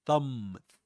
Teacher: there's no vibration in the vocal folds when you produce the initial sound in thumb. Put your fingers here and you'll notice that.